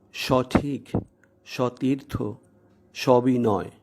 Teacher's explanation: তাই স-এর সাথে বিলীনভাবে ব্যবহৃত অধ্বনির পরে হ্রস্ব ই ও দীর্ঘ ইকার থাকা সত্ত্বেও উক্ত অধ্বনির উচ্চারণ স্বাভাবিক, বিবৃত বা অ এর মতো হয়েছে, ও এর মতো নয়। তাই আমরা উচ্চারণ করছি সবিনয়, সবিনয় নয়।